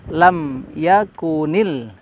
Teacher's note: jangan kita menahan lama di pembacaan lam ya lam jangan terlalu lama